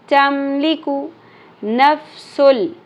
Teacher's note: इन दोनों को मिक्स करेंगे लेकिन गुन्ना की साउंड बीच में नहीं आएगी। नफ्सुन नहीं पढ़ना, नून साकिन की साउंड नून की साउंड स्किप हो जाएगी, गुन्ना स्किप हो जाएगा। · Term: इदगाम बग़ैर गुन्ना